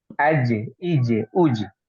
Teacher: karena Ja ini termasuk dari huruf qqalah ya yang memantul